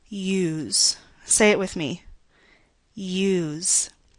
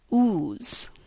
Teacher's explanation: Do you hear a Y-like sound at the beginning of the word?